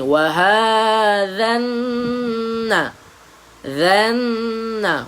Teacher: Pada huruf nun kena dengung dua harakat. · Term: al-gunnah